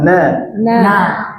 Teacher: yakruju minal khaisyum. Yang keluar dari rongga hidung.